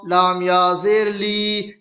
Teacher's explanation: یا ساکن سے پہلے لام کے نیچے زیر کی حرکت ہے، اس لیے یا مدہ ہوا اور یا مدہ کو تھوڑا کھینچ کر پڑھیں۔